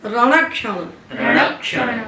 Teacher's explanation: क्षण में जो क्ष है, क्ष में दो अक्षरों का संयोग है, का और श का, मूर्धन्य श का। तो का जो पहला अवयव है संयोग का, उसने पकड़ लिया इस आग को, क्योंकि वो आधा है, आधा है, लंगड़ा है, तो किसी का सहारा जुड़ेगा।